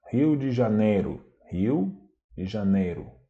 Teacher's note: Por exemplo, no final das palavras, quando esse som essa sílaba é fraca, né? Não tem força nenhuma, o O é pronunciado com som de U.